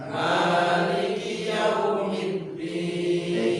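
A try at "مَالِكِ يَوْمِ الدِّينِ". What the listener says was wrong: Dirubah sedikit, kalau mim tidak boleh tebal karena dia tipis. Jangan baca Maliki Yaum sama-sama bukan ma, itu dia tebal tipis. Maliki Yaumiddin.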